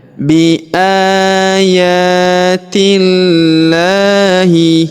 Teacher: Huruf ya kita panjangkan dua harakat karena terdapat alif kecil di atasnya